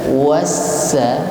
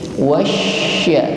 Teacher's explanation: ketika mengucapkan huruf shin maka tekanan udara yang keluar ini jauh lebih besar kalau dibandingkan dengan sin atau sa. Jadi tidak sekedar wasa, tetapi lebih dari itu. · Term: sifat tafasyi